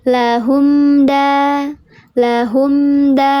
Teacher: Kalau mim mati bertemu dengan huruf selain mim dan ba, maka disebutnya izhar syafawi. Dibacanya jelas, ditahan dua ketukan.